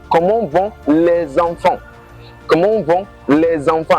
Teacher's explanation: That les enfants there shows that there is a liaison between the les and the enfant. The les ended with an s and then the enfant started with a vowel.